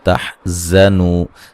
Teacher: تحزنوا زا کو زور سے سیٹی سے ادا کریں گے